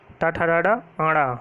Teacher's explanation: ये मूर्धा से बोले जाते हैं। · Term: टा वर्ग